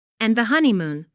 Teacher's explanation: Listen to the stress on honey. There are three syllables in honeymoon with the stress on the first syllable.